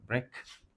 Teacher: With a stress on the first syllable.